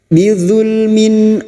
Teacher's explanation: bunyi kasr tanwin dibaca jelas tanpa mendengung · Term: Idhar halki